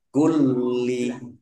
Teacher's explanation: Ala kulli lam fathah berdiri juga mad tabi'i, panjang 2 harokat. Lamnya dibaca double, ada tasdidnya, ditekan biar tampak doublenya.